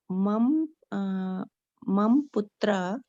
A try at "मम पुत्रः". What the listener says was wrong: फिर मम बोल रही हैं आप। पुत्रः।